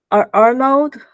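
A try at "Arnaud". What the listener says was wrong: You don't say the D, it's Arno. simpler than it looks.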